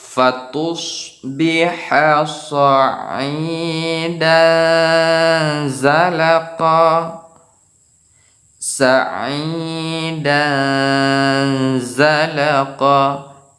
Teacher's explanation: Dan jadi baris 2 berjumpa dengan huruf za, yaitu huruf ikhfa. Jadi pembacaannya samar-samar antara izhar dan idgham.